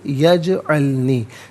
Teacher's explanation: جیم ساکن ہے لیکن حرف قلقلہ ہے تو آواز لوٹتی بھی محسوس ہونی چاہیے